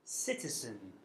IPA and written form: ˈsɪtəzən (citizen)